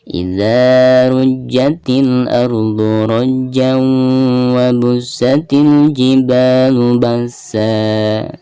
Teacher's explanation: Dan termasuk idgham bigunah, maka suara tanwinnya itu harus dimasukkan ke huruf waw.